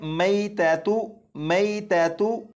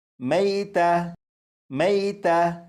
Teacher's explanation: جب اس لفظ پر وقف کریں گے تو آخر میں جو گول تا ہے اسے ہا ساکن سے بدل دیں گے، اور اسے وقف میں پڑھیں گے میتا، میتا۔